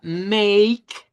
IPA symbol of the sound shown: eɪ